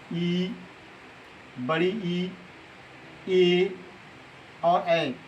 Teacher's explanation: जो स्वर निकलता है वो जीभ के अग्रभाग से निकलता है, तो हम उसे बोलते हैं अग्रस्वर।